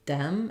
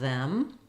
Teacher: if it stops it's going to sound more like a d like Dem instead of them or breed instead of breathe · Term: th sound